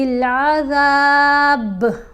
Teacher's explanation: یہاں پر دیکھیں با ساکن پڑھا جا رہا ہے، با ساکن ہے نہیں، یعنی اس کے اوپر جزم نہیں ہے، لیکن ہم نے وقف کرنے کی صورت میں با کو ساکن پڑھنا ہے، تو جب ساکن پڑھیں گے تو پھر اس کے اوپر کلکلا کریں گے